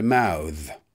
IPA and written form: maʊð (mouth)